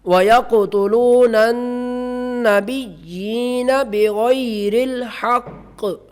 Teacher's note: وقف کریں گے تو آخر پر قاف کی آواز جو ہے پتہ چلے کہ یہاں قلقلہ ہوتا ہے